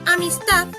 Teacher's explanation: Por ejemplo, en la palabra amistad, la sílaba tónica es ta, mientras que las anteriores son las sílabas átonas